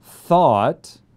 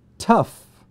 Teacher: thought, that's an aw sound, and tough, that's also an aw sound, but it's a lot shorter